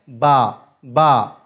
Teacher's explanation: बा का जो मखर है वो होठों की तरी का हिस्सा होता है